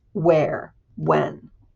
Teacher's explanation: So this would be where when um we don't hear it so much in the way folks speak in Ohio at least. We tend to say words like where and when as if they're just a w